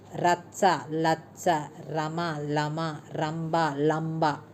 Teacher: ర కి బదులుగా ల వాడే దోషం